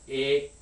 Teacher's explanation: this mid vowel a in english has what's sometimes called an off glide so it starts like a and it ends like e and you'll see that written in a bunch of different ways